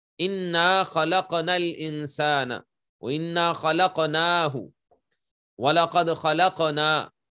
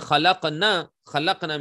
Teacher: So khalaqna, when you pronounce khalaqna, you have to stretch the sound of noon because there is alif after noon. But if you don't stretch it and you read it, khalaqna, khalaqna means those females created.